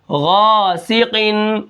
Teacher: غین کو ہم موٹا پڑھیں گے